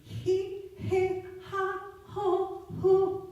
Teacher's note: My tongue went back, so my pitch went down. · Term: aspirate